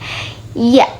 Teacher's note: apabila tengah lidah bertemu langit-langit keras, terjadilah bunyi ya